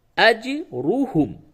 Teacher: حمزہ جیم زبر اج، را پیش رو، حامیم پیش ہم، اج روحم. یہ را کو پڑ کر کے موٹی آواز سے پڑھیں گے. را پہ جب بھی زبر اور پیش ہو تو اسے پڑ کر کے پڑھتے ہیں، یعنی موٹی آواز سے پڑھتے ہیں، اور را پہ زیر ہو تو اسے باریک پڑھتے ہیں.